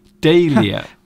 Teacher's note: But you don't actually pronounce the H, so it's just dahlia.